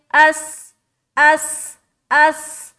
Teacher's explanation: سین کو جب بھی ادا کرے تو صفت صفیر کا خاص خیال رکھے کہ اس میں سیٹی نما آواز ظاہر ہو رہی ہے یا نہیں ہو رہی ہے.